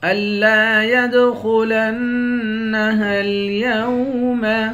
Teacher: الا يدخلنها اليوم، الا حمزے کو تشدید والے حرف کے ساتھ ملا کر پڑھیں گے، یا کو دال کے ساتھ ملا کر دال پر قلقلہ کریں گے، خا کو موٹا پڑھیں گے، لام کو نون مشدد کے ساتھ ملا کر نون پر غنہ کریں گے